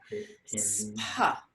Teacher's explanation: it's just difficult to get that SPH, that Mahaprana sound in there